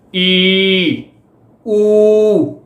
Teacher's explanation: ਜੀਭ ਜਿੰਨੀ ਵੱਧ ਤੋਂ ਵੱਧ ਉੱਚੀ ਉੱਠ ਸਕਦੀ ਆ, ਉਸ ਦੇ ਅਨੁਸਾਰ ਹੀ ਇਹ 2 ਉੱਚੇ ਸਵਰ ਮੰਨੇ ਜਾਂਦੇ ਆ